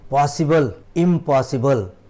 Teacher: प हे बायलेबियल आहे, म्हणजे 2 ओठ जुटून हे उच्चारण्यात येतं, म्हणून म सुद्धा बायलेबियल आहे.